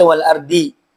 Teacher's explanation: Huruf tebal yang seringkiali keliru adalah wal ardhi ya di ayat keenam. Wal ardhi harusnya tebal dibaca wal ardhi ya. Seolah-olah itu huruf dal padahal huruf dad.